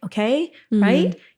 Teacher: it sounds like they're asking questions because their voice keeps going up at the ends of all their phrases and sentences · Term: uptalk or upspeak